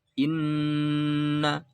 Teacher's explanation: Di sini ada nun lagi yang bertasydid, maka harus dibaca apa? Gunnah. Lamanya 2 ketuk.